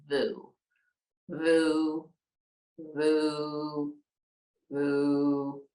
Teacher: We're going to say it as long, we're going to press the air out as we VOO it out. Vocal cords are going to vibrate. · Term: VOO sound